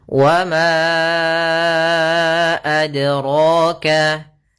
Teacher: Kemudian pada lafal dal sukun ini ada bacaan qalqalah, artinya memantul. Ya, iqtirab, bergetar. · Maka ma-nya kita panjangkan dahulu baru kita baca a-nya. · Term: mad jaiz munfasil